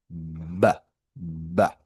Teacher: Fíjese que cuando usted dice la consonante va en inglés va, va va a tratar de repetir el sonido conmigo y va a notar que si usted se coloca la mano aquí en el cuello, la va produce una vibración en las cuerdas vocales